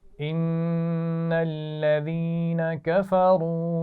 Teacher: ان الذین، نون پر غنہ ہوگا